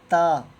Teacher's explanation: زبان کو دانتوں سے تھوڑا سا باہر نکال کر تا کو پڑھنا ہے اور باریک کر کے پڑھنا ہے